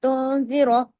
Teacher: یہاں پہ اخفا حقیقی غنہ کاملہ، آگے را پہ زبر کی وجہ سے را ہیوی ہوا